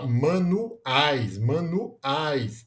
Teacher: a gente tem a a vogal a junto na mesma sílaba com a semivogal i Então a gente tem novamente um ditongo né que no caso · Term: ditongo decrescente